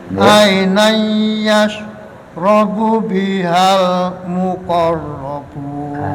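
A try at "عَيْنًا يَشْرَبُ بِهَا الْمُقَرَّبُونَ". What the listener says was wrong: Kurang dengung, kol-kolannya juga kurang sempurna, Bapak.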